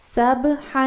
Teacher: با پر جزم ہے، ساکن ہے تو قلقلہ کی آواز نکالیں گے